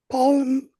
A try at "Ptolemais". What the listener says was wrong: Talamus. Yeah, the P is silent.